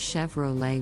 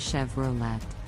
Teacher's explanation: the correct pronunciation is Chevrolet with the emphasis on the second syllable